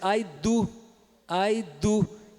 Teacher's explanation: a maioria dos brasileiros vai dizer a do a do que é usando o d dental